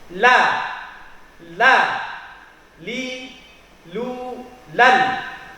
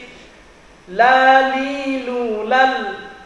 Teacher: Lam itu keluarnya dari dzalqiyah, yaitu ujung lidah atau ujung lidah dengan gusi yang ada di atasnya. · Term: huruf lam